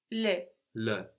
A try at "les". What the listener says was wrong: That's les. No, we don't hear that s, but the e does sound different. We get le and le. So we got the plural with an s.